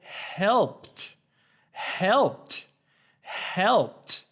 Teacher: the p before the ed does not make your vocal cords vibrate therefore it doesn't have a voice so you have to produce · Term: t sound